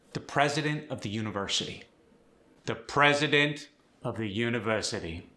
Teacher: Loud at the start, soft at the end. · The regular Boston accent is flat and monotone, but the upper class Massachusetts accent dips down on certain stressed words